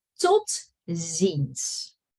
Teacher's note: Make sure you don't say this S as a sh, which I hear a lot. It's just an S, like snake.